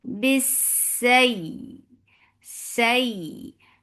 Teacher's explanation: ما جاء bis, for kasra, give e sound attached with sin. Sin will get sifa rakhawa. It has safir and it is light.